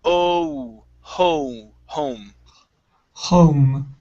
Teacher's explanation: Instead of aum, go to an O first